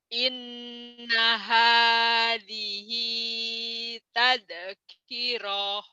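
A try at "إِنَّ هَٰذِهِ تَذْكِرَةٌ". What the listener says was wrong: Pendek, tazkirah. Tazkirah karena nggak ada madnya ya. Inna hadhihi tazkirah. Inna hadhihi tazkirah.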